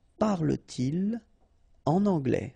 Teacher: no liaison after your pronoun